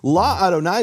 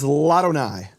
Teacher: La Adonai becomes Ladonai. And what happens is the vowel drops from the aleph, and the aleph is silent.